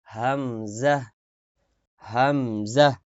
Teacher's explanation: হলকের প্রথম মাখরাজ হলকের শুরু মানে গলার শেষ থেকে একদম বুকের উপর থেকে